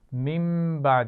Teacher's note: نون ساکن کے بعد با آ گیا ہے تو ہم نے اس کو میم سے بدلا ہے اور غنہ بھی کیا ہے